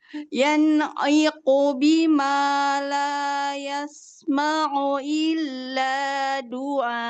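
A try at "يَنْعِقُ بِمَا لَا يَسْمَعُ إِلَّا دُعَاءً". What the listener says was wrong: Nanti lebih jelas lagi mana Ain sama Hamzah ya.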